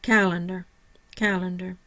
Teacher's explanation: My primary stress is on the cal, the first syllable. No secondary stress.